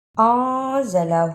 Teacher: نون ساکن کی آواز کو تھوڑی دیر ناک میں چھپا کر غنہ کرنا ہے۔ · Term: اخفا